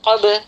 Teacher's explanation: Kita baca dengan pantulan yang tidak terlalu kuat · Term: qalqalah sughra